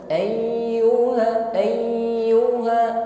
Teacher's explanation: Huruf ya bertasydid ditekan membacanya ya. Tapi jangan sampai huruf ya putus bunyi hurufnya. Bukan tertahan ya, bukan ya ayyuha, tidak putus bunyi ya-nya.